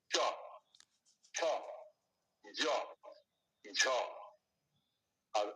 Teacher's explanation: জিভের পাতা এটা উপরে তালুর সামনের অংশের সাথে ঘর্ষণ হয় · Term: চবর্গীয় শব্দ